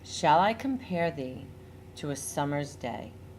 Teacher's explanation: the emphasis is on the second fourth sixth eighth and tenth syllables · The emphasis is on the second, fourth, sixth, eighth, and 10th syllables. Hint: if your mouth drops when saying a syllable, that is where the stressed syllable occurs. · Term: iambic pentameter